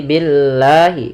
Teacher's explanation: lam tipis tidak dibaca dengan lam tebal